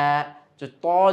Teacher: মুখের ভিতরে একটা কেমন যেন কিছু বাতাস আমরা জমিয়ে ফেললাম মুখটা একটু মোটা হয়ে গেল আওয়াজটা মোটা হয়ে গেল